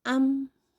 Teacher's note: Misal huruf mim, makhrajnya ada di bibir atas dan bibir bawah dipertemukan. Maka kita harus berhenti di makhraj tersebut ketika pengucapan huruf tersebut bertanda sukun. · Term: mim sukun